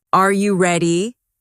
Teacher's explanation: when a native speaker asks a yes or no question like, Are you ready? the pitch of their voice goes up at the end. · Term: intonation